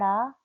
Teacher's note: जीभ की नोक झटके से नीचे गिरती है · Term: उच्छिष्ट